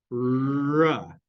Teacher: This is the sound ra, and ra, your tongue is pointing towards your alveolar ridge